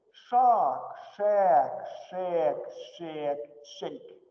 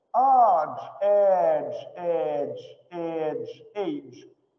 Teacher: Долгое А переходит в Э, а потом Эй.